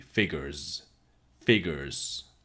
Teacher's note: the S at the end figures is almost like a Z